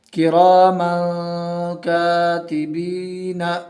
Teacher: 1 الف کے برابر ناک میں پڑھیں گے چھپا کر